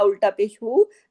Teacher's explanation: उल्टा पेश हु, दो हरकत खींचा जाता है